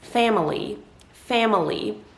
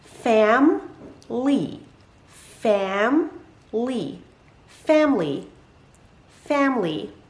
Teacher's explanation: the letter i in the middle of the word actually does not get pronounced it gets dropped